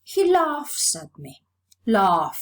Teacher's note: The last sound of the verb f is voiceless, so the third person singular morpheme is realized as a voiceless sound because f is voiceless too.